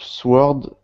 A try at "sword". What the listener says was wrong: Now this word here is sword. We don't pronounce the W in this word. It's just sword.